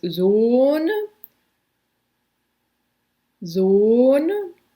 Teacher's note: So when you say oh, there's like a lot of different vowels going on there. And in German, it's just one sound, and it can sound like oo at first, but it's actually o. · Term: long O